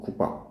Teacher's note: 말 그대로 명칭 그대로 된소리가 아니었던 것이 된소리로 되는 건데 국밥 같은 경우 안울림 소리 기역 플러스 안울림 예사 소리 비읍이 부닥칠 때 이 발음이 대단히 어려워요. 그래서 이 뒤에 있는 비읍을 된소리로 바꿔줘야만 발음이 쉬워요. 빨리 발음할 수 있고 국밥 이런 식으로. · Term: 된소리 대기